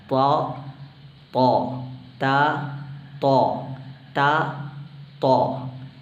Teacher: ത്വാഇന് ഇസ്തിലാ അഥവാ നാവ് ഇത് പറയുന്ന സന്ദർഭത്തിൽ നാവിന്റെ മധ്യഭാഗം ഉയർന്നു നിൽക്കുക എന്ന ഒരു പ്രത്യേകത ഈ അക്ഷരത്തിന് കൊടുക്കണം മാത്രമല്ല ഇത് വായ മൂടിയാണ് ഇത് ഉച്ചരിക്കേണ്ടത് ത് ത് താ ത് താ